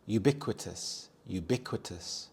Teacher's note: The stress is on the second syllable bic, ubiquitous.